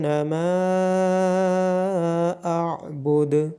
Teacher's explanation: دال پہ قلقلہ کیا جائے گا